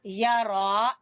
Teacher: या को छोटा, रा को खींचेंगे